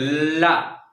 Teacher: पार्श्वी व्यंजन का मतलब है हमारी जीभ के अगल बगल से क्या निकले? हवा। ला बोल के देखो, ला एट जाती जीभ बगल से, ला, तो पार्श्वी व्यंजन एक होता है और वो है ला।